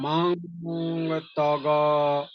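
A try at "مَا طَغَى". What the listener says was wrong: এই যে নুনটাকে যেন না ধরি আমরা, হ্যাঁ, ডাইরেক্ট চলে যেতে হবে হচ্ছে ততে। মাও ত। আমি যদি বলি মাউন ত, এই টাইপের হয়ে গিয়েছিল কিছুটা।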